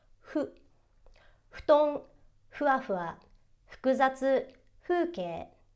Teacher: So hu kind of feels like it should be an F, but it's not true because you're not supposed to use your teeth against your lips in order to make that sound. What you really want to do is you want to make a tiny circle with your lips and just blow air through it, and it should produce a sound that's halfway between an F and an H.